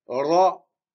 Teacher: Ici, il faut rouler le R.